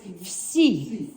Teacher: It's like V and an S, you say it in one motion and then attach the I to it.